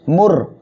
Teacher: র সাকিন তার ডাইনে পেশ আসছে, মোটা করিয়া পড়তে হবে